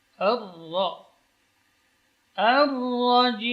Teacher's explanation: Ra ketika bertasydid maka getarannya berkurang dan ketebalannya bertambah.